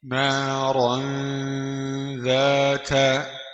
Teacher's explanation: راء تنوين بالفتح مخفى عند الذال المفتوحة بغن حركتين